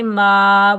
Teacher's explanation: میم کے اوپر کھڑا زبر ایک الف کی مقدار کھینچ کر ادا کریں گے